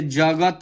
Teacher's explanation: Example के लिए जगत में ज और त के तुलना में ग पर अधिक बल लगता है। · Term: बालाघात